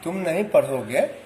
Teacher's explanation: इस वाक्य में किसी भी शब्द पर बल नहीं है। तुम नहीं पढ़ोगे, यह साधारण सी बात है।